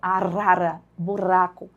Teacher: Então é um fonema vibratório. É o R que vibra.